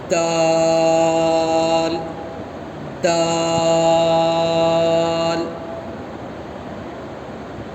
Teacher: دال زبان کی نوک اور سامنے کے 2 دانت کی جڑ جہاں سے تا نکلتا ہے وہیں سے ہی دال نکلتا ہے